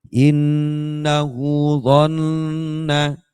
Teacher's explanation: Nun tasydid itu dengung